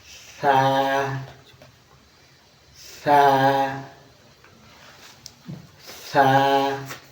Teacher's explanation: সা হরফটা উচ্চারণের জায়গাটা একটু দেখে নিই। জিহ্বার আগা উপরের দাঁতের আগার সাথে লাগান, তারপর উচ্চারণ হবে। দেখেন আমি লাগাইতেছি জিহ্বার আগা উপরের দাঁতের আগার সাথে।